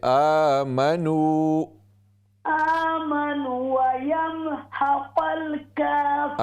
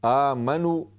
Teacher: یہ واو مدہ ہے، اس کو کم از کم ایک الف کی مقدار اس کو آپ لمبا کریں. آمنو یہ پھر صرف پیش کی آواز ہوتی ہے.